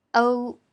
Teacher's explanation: O is the main vowel. When pronouncing o here, the tongue position is slightly forward. The shape of the lips is not so round,